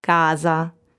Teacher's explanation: s is voiced between two vowels and in that case it sounds like this casa so it's